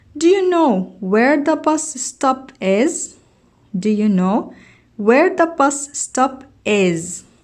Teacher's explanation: notice that the indirect questions has rising intonation. نستمع ونلاحظ أنه في السؤال الغير مباشر هناك في ارتفاعات في النغمة عندما نقرأ هذا السؤال.